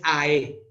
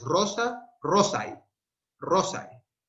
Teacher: El segundo elemento es entre una E y una I. No es AE, es I. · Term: diptongo